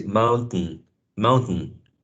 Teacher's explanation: it's like you're blocking the airflow from um leaving through your mouth and then it goes through your nasal cavity